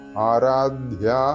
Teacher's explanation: ആരാധ്യ അധ തൊണ്ട ചേർത്തുകൊണ്ടാണ് ഉച്ചരിക്കേണ്ടത്